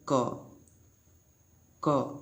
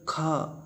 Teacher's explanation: का की अपेक्षा खा बोलने में हवा ज़्यादा निकलती है, तो इसके बोलने में ज़्यादा हवा निकलती है मुंह से, तो इसे बोलते हैं महाप्राण, महाप्राण।